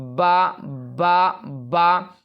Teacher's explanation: تو دونوں ہونٹ کو ملنے سے نکلتا ہے، دونوں ہونٹ سے نکلتا ہے